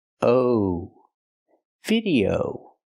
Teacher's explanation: the last vowel is a long o like no and go